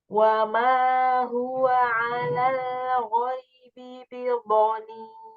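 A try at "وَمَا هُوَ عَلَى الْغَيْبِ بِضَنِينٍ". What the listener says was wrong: Nah, lebarkan lam alal ghaibi. Jadi bukan alal alal ghaibi. Jangan al, tapi al menyentuh di gusi. Alal alal. Nah, itu nyentuhnya di gigi. Seperti al an al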